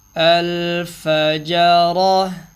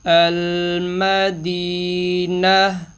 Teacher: گولتا پر جب وقف کریں تو گولتا کو ہا بنا دیں گے